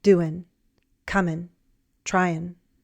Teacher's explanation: In very relaxed speech, some American English speakers drop the G in the -ing ending.